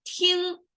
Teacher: we have the G at the very end, which means a deeper nasal sound over there